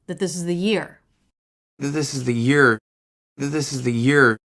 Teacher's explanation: the four words that this is the take about as much time as the one word year